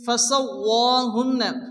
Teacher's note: নুনের পর তাসদীদ নুন গুণ ওয়াজিব